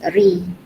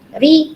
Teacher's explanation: Biasanya kita kasrahkan ro ni, dia akan jadi nipis ri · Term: ro tarqiq